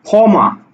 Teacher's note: দেখো ক্ষমা, এই ক্ষীয়টা কোথায় আছে, শব্দের প্রথম বর্ণে, অর্থাৎ তখন এটা কিন্তু উচ্চারণ হচ্ছে খ ময়াকারে মা, ক্ষমা, খ উচ্চারণ হচ্ছে শুধু খ